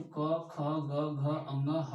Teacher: तथा व्यंजन की बात करें तो क ख ग घ अंग ह और विसर्ग जो होता है इसका भी उच्चारण जो होता है वह कंठ से होता है